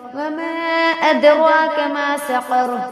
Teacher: وما ادراک میں واپر ہوگی، دال حروف قلقلہ میں سے، یعنی اس کو پڑھتے وقت مخرج ٹکر کھا کر الگ ہوں گے